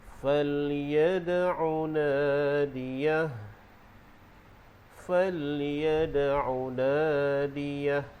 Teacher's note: Dalam ayat yang ke-17 terdapat hukum qalqalah pada huruf dal, namanya qalqalah sughra, dan waqaf pada nadiyah, kita waqaf dengan hak tu berbaris sukun.